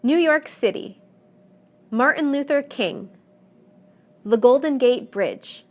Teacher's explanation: whether the proper noun is 2 3 or even 4 words the stress will always fall in the last segment